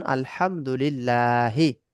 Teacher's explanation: আল্লাহ শব্দের লামের পূর্বে জের মানে লামের আগে জের হলে আল্লাহ শব্দের লামকে বারিক পাতলা করে পড়তে হয়, মানে লা করে পড়তে হবে।